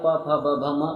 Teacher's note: प वर्ण का जो उच्चारण स्थान है वो ओस्ट है